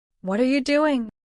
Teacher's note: Express curiosity. Focus on a slight falling intonation on doing.